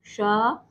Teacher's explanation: इसको बोला जाता है मूर्धा से, तो इसको मूर्धन्य शा बोलते हैं